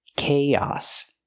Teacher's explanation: use the ck sound like Cake Plus the long a k and then the a sound like hot and stop